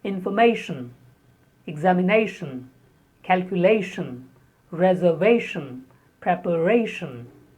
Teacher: Normally when you have tion at the end of a word, especially when a verb is converted into a noun with tion, the stress is on the second last syllable.